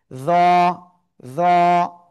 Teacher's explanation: দাঁতের আগায় লাগিয়ে একটু মোটা আওয়াজে আমরা উচ্চারণ করব এক আলিফটা নিয়ে।